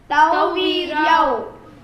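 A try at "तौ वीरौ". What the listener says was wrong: Tau veerau. There is no yakara there. Tau veerau.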